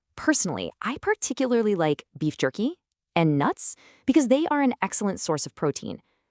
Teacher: That little lift at the end of jerky and nuts? That's what we call a rising intonation, and it totally changes the game.